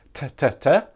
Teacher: these consonants actually touch the alveolar ridge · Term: T sound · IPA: /t/